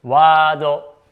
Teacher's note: So, we replace this Er sound with A, so this will sound like Waado.